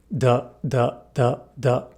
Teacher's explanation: With this consonant, our vocal cords are engaged. Thus, D is a voiced consonant.